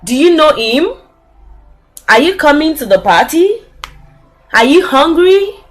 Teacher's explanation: we also use the rising intonation for a yes or no question.